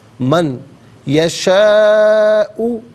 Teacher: من میں نون ساکن ہے، یشاء کی یا کے ساتھ ملائیں گے، یا کی آواز کو غننے کے ساتھ ادا کریں گے. یہاں پر یرملون کا جو قاعدہ ہے وہ اپلائی ہوگا.